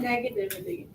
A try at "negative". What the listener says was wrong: Negative. You added like a syllable.